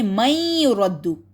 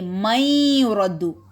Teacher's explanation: نون کی sound again cancel, میم کو یا کے ساتھ جوائن کریں گے شد کی وجہ سے، لیکن کیونکہ یا کے اوپر شد ہے اس وجہ سے ہم ناک سے آواز نکالیں گے من یرد.